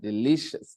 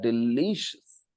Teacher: the stress is on the second syllable delicious okay l i l i lee we stress that delicious